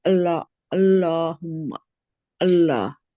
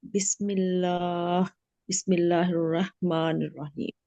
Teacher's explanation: अल्लाह से पहले अगर जबर हो और पेश हो तो हम इसको मोटा पढ़ेंगे